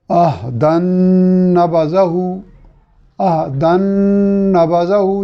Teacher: जो तनवीन की नून है उसका इदगाम हो गया नबज़ा की नून में और उसकी अलामत के तौर पे नून के ऊपर तशदीद मौजूद है।